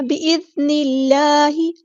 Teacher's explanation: اللہ کا لام یہاں پہ باریک پڑھیں گے ہم کیونکہ اللہ کے نام سے پہلے زیر آئی ہے. بِإِذْنِ اللہ، اسمائلی فیس بنائیں اور باریک پڑھیں.